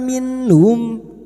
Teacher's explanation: Nun sukun bertemu ha idhar halqi. Nun sukun dibaca jelas tanpa mendengung.